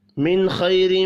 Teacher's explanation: نون ساکن کے بعد خواہ ہے، اخفاء حقیقی ہوگا، خواہ پر پڑھا جائے گا، را کو زیر کی وجہ سے باریک پڑھیں گے، میم مشدد پر غنہ کرنا ہے۔